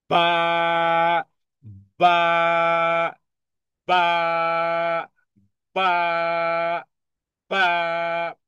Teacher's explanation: বা উচ্চারণ করতে আগে দুই ঠোঁট বন্ধ রাখুন, নিঃশ্বাস আটকিয়ে রাখুন, আওয়াজ বন্ধ রাখুন, জিহ্বার গোড়া নিচে রাখুন, জিহ্বার উপরের তালুর সঙ্গে লাগানো থেকে দূরে থাকুন, উচ্চারণে আওয়াজকে কঠিন, উচ্চারণে ধাক্কা। · বাকে আমরা, হ্যাঁ, ঠোঁট বন্ধ রেখে এরপরে আমরা টেনে পড়তেছি। আওয়াজ উচ্চারণে ধাক্কা দেওয়া, শুধু বা নয়, বরং বা, বা, বা, বা, বা, সিরিয়াস হার্ডলি, স্বাভাবিক।